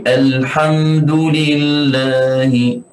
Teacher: mim ada sifatut tawassut. Perlukan kita menahankan suara sedikit supaya tidak ada pantulan.